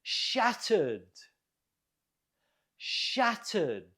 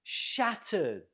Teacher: Note the stress on the first syllable.